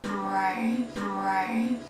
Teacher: 이 사운드에서는 시작이 우로 시작한다고 생각하시면 돼요. 그래서 right가 아니라 right. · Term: R 사운드